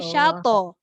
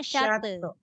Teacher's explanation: Itu bukan ta, dia to. Jadi dia punya lantunan kena tebal.